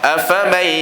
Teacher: Memasukkan huruf nun ke dalam huruf iya dengan bi ghunnah. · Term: idgham